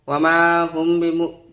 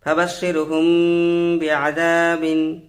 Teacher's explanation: মিম সাকিনটাকে গুণনা করে পড়ব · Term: ইখফায়ে শাফাবি